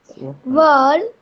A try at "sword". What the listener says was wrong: Word नहीं, SWORD, sword.